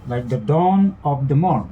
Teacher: These are most important words, plus these words are monosyllabic, so the stress will fall on those parts, that is dawn and morn. So the pattern here is unstressed, unstressed, stress, unstressed, unstressed, stress, and divided into 2 feet, each containing one stressed syllable. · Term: anapastic diameter